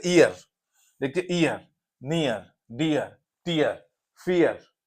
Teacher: तो फियर, नियर, टीयर, बियर, सब में क्या है, इया की साउंड आ रही है, पहले ई फिर आ आता है।